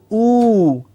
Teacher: it's a long clear ooh the lips come together to form a small round ooh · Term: long o sound